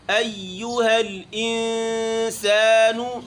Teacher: ای میں ہونٹ گول نہیں کرنے، پھر یو پڑھتے وقت ہونٹ گول ہوئیں گے